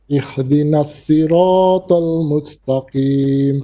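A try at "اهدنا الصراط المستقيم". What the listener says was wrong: Try not to bounce the ha. Ihdinas sirata. Ta is heavy. Ihdinas siratal mustaqim.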